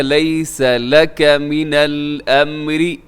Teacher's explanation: امری میں را باریک رکھیے گا